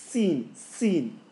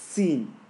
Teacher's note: The zay and the sin have a whistle.